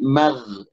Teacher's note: bukan huruf qalqalah, huruf gin ini, jadi tidak boleh mantul. Ya, ada banyak yang orang awam yang bacanya mage gitu ya.